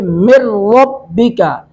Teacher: मिन नून साकिन के बाद रॉ है, इदगाम बिला गुना करेंगे, मिन को पढ़ेंगे मिर रब्बिका, अताअन तो पर मध्य मुत्तसिल 3 अलिफ खींचेंगे, अन हमजा पर तनवीन है, अताअन यहाँ पे अन पर इजहार करेंगे, حمزہ پر تنوین، ان تنوین کے بعد ہا حروف اظہار میں سے ہے.